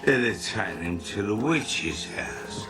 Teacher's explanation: the sound I instead of A in the word taken. It's another bright feature of Cockney accent.